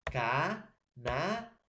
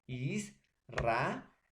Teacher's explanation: una vocal abierta más una vocal abierta se van a separar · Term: hiato